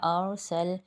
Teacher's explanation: را ساکن اور اس کے پہلے زبر ہے تو یہ موٹا پڑھا جائے گا